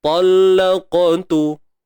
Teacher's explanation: Itu praktikal bagi qalqalah sughra. Ada huruf qaf ni huruf tebal, maka lantunan yang berlaku juga tebal.